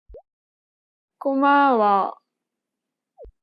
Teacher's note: of the last syllable in the sentence listen to an example she kept the same pitch for the first and second syllable but lowered the tone for the last syllable